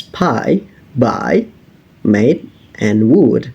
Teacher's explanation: First, we have bilabial, which is basically your lip. The both of our lip, the upper and the lower lip, are contributing in making sounds such as p, b, and w. Some words such as pie, buy, made, and would are produced by both of our lips.